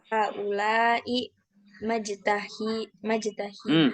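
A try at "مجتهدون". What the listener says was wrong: Bukan maja, tapi muj. Ya, mujtahidun.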